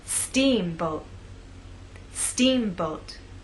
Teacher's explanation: making the first part of the word louder longer and at a higher pitch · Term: stressed part